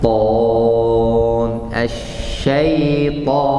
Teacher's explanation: Pangkal lidah naik jadi suaranya o. Karena pangkal lidah naik, Dan ada bagian dari lidah ketemu langit-langit atas.